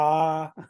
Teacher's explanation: पूरा पूरा मुंह खोलना पड़ता है